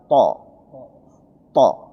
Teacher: Ah, jadi lidah tidak menyentuh gigi.